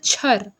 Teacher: यह महाप्राण अघोष तालव्य और स्पर्श संघर्षी व्यंजन आए।